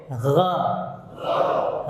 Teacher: Ada gesekan di tenggorokan atas, di akar. Di akar tenggorokan sini ada gesekan sedikit. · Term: ghain